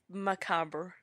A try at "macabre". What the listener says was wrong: We say macabre. We just kind of leave out the extra syllable.